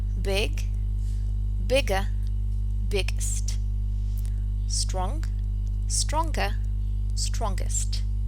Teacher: in the comparative and superlative form of adjectives the suffixes ER and EST are pronounced as a schwa and ist